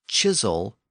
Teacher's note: in Normandy the k sound shifted to a CH sound and produced the word chisel